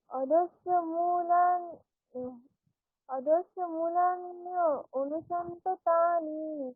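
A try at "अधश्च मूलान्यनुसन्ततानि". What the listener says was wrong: না না না, মূল আপনাকে ভাঙতে হবে না কোথাও, একসঙ্গে অধশ্চ মূলা আকারে অনেকক্ষণ টেনে নেবেন। অধশ্চ মূলান্যনুসন্ততানি, বলুন আবার।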